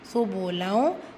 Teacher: தன்வீன் இருக்க நூனை பாதியாக மறைச்சு குன்னா செய்யணும்